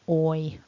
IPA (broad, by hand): ᴐɪ